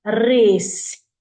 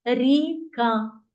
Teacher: і вже звук р буде м'яким приголосним звуком адже ми говорили що якщо приголосний звук стоїть перед звуком і то ці всі звуки будуть м'які